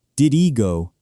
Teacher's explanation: We also drop the H sound at the beginning of words sometimes.